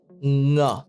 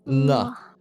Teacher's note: But yeah, in this sound, right, it's nga. So it's the back of your tongue going to the back of your throat.